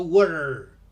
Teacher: In US English, the T in the middle of a word becomes an R